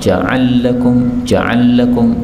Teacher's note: ketika lam ketemu dengan lam maka ini bisa dibaca Idgham